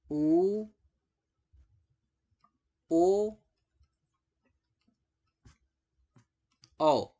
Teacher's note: आपका जो वाइब्रेशन है, जो आपका कंपन है, वो जीभ के पिछले हिस्से में सबसे ज्यादा है।